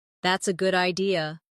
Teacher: If someone says that's a good idea, notice how their voice rises at the end.